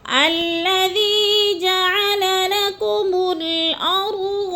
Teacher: الذی کو ہم نے تھوڑا سا کھینچنا ہے کیونکہ یا مدہ ہے